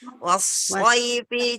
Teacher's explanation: seperti sin biasa, seperti es, Bun, seperti es kita. Hanya saja lidahnya nempel, Bun, ke atas.